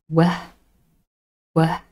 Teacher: We form W by using both our lips. They come close, but there's no full closure. W. So they come close and then we release them and spread our lips a little bit.